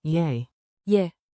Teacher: Say it like a quick, soft yay, yeah, with rising intonation, think two ascending notes